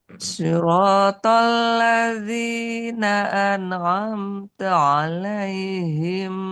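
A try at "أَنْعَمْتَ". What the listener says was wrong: Nun kepantul. An jangan ana. Tahan satu harokat. An'amta. Bukan an'amta. Nah, itu kepantul-pantul. An'amta.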